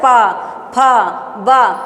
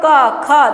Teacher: जब हम प बोलते हैं तो ओठ छू रहा है कि नहीं? एक दूसरे को सट रहा है ना। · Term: ओष्ठ